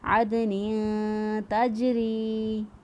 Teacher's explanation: جیم پر بھی قلقلہ ہوگا کیونکہ قطب الجدن جو ہے ان 5 حروف میں جیم بھی آتا ہے، تو یہاں پر دال اور جیم دونوں پر قلقلہ کرتے ہوئے ہم نے اس کو ادا کیا